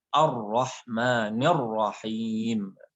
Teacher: Jadi mulai awal ra-nya itu tebal sekali.